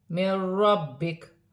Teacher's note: وقف کی صورت میں زبر گر جائے گی اور کاف ساکن ہو جائے گی۔ نون ساکن کے بعد را آ رہی ہے تو نون ساکن میں غنہ نہیں ہوگا